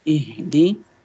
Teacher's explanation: So this is ha from the bottom part of the throat.